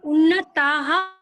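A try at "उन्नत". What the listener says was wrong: এখানে বিসর্গ নেই উন্নত উন্নত আর যদি বিসর্গ হয় তাহলে হতো উন্নত হ এখানে উন্নত হ নেই বিসর্গ নেই উন্নত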